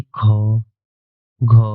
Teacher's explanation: जिन व्यंजनों के उच्चारण में हवा अधिक मात्रा में मुंह से बाहर निकलते हैं उन्हें कहते हैं महापराण व्यंजन